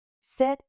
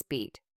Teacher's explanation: The short sound is relaxed and quick. The long sound is tense and extended.